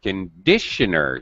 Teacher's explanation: You can hear the stress in the middle.